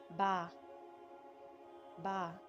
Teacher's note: यह र्फ दोनों होठों के तर हिस्से से अदा होता है